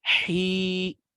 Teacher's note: ha sedianya adalah di wastul halqi, di tenggorokan bagian tengah. Tapi karena ada huruf ya yang tersukunkan, maka ini menjadi panjang, menjadi mad, ya, menjadi mad tabi'i di sini sehingga masuk ke al-jauf juga.